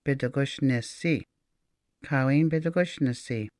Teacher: When we add the suffix si, S-I-I, to the end of Bidagushan to make it a negative term, we say Kawin Bidagushnisi. The I in shin becomes very weak, or you could even say that it hops over to the other side of the N.